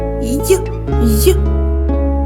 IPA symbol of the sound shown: йʼ